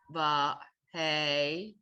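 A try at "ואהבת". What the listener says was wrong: It's no hey. Vowel?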